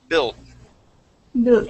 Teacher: I want you to keep that short I sound, but I want to swallow the T.